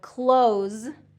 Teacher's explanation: close is going to have that voiceless S sound